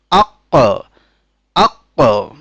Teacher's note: পঞ্চম মাখরাজ হলো জিহ্বার গোড়া এবং তার বরাবর উপরের তালু এ স্থান থেকে একটি হরফ উচ্চারিত হয় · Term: কফ